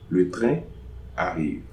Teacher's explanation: So then the next word starts with a vowel, but no liaison. So no liaison between train and arrive.